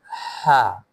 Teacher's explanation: its sound comes from the middle part of the throat.